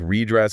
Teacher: of saying like red dress with two separate D sounds yeah it kind of becomes more like redress with a single like lengthened D sound